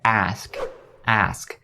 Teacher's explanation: ask ends with two consonant sounds the s and the c sound and these sounds are basically voiceless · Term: sk sound